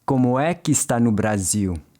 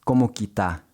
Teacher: In fast-spoken Portuguese though, that é in the é que often disappears, which is why he just says como que tá.